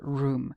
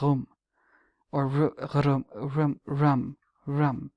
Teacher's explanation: maybe it's meant to be pronounced with a shorter oo sound, like rum, or rum.